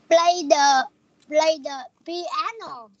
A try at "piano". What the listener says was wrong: Con không cần đọc là piano như vậy, con đọc là piano nhẹ thôi, piano.